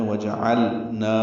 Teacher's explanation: اس میں لام جو ساکن ہے اس پہ اظہار کرنا ہے وَجَعَلْنَا، لام اور نون کا ادغام نہ ہو.